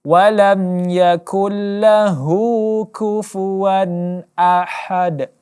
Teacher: huruf H pengambilannya dari tengah-tengah kerongkongan